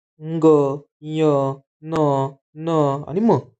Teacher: हे पाच आपण उच्चारण करताना नाकातून अनुनासिका म्हणजे नाकावाटे नासिका वाटे यांच उच्चारण होतं